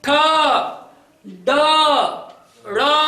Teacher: मेरी जुबान अंदर की तरफ टेढ़ी हो रही है और जाके मेरे तालू में चिपक रही है। सीधा चिपकती तो तालव्य, और टेढ़ी अंदर की तरफ टेढ़ी होकर फिर मेरी जुबान चिपक रही है। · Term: मूर्धन्य